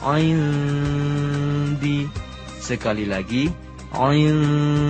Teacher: Nun sukun bertemu huruf dal, hukumnya ikhfa, yaitu menyamarkan bunyi nun sukun ke huruf dal disertai dengung seukuran 2 harokat. Tertulis indi, dibaca indi.